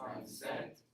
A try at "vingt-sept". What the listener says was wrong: No, you cannot pronounce the P.